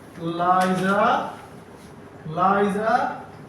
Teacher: The tante forms a partial closure with the alvola ridge. The air flows through the sides of the tongue. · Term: lateral